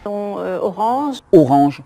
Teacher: це носовий звук, але не звук «он», а звук «ан» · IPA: [ɑ̃]